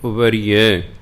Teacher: ਇਸੇ ਤਰ੍ਹਾਂ ਯਈਏ ਦੇ ਵਿੱਚ ਸਿਹਾਰੀ ਦੀ ਆਵਾਜ਼ ਪਹਿਲਾਂ ਹੀ ਹੁੰਦੀ ਹੈ ਅਤੇ ਇੱਕ ਸਿਹਾਰੀ ਰਾਰੇ ਨੂੰ ਪਹਿਲੇ ਲੱਗੀ ਹੋਈ ਹੈ, ਇਸ ਲਈ ਉਹਦੀ ਆਵਾਜ਼ ਫਿਰ ਦੂਣੀ ਹੋ ਜਾਏਗੀ। ਸਿਹਾਰੀ ਦੀ ਆਵਾਜ਼ ਬਿਹਾਰੀ ਵਰਗੀ ਹੋ ਜਾਏਗੀ। ਇਸ ਲਈ ਪੜ੍ਹਨਾ ਉਬਰੀਏ, ਰਾਰੇ ਨੂੰ ਬਿਹਾਰੀ ਲਾ ਕੇ ਬੋਲਣਾ।